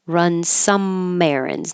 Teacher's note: Now the M will connect to the air.